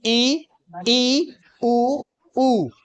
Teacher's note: बहुत ही कम मात्रा में आपका मुख खुला रहे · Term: समृत स्वर